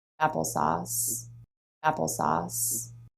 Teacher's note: let's just talk about syllable length for a second here we have long short long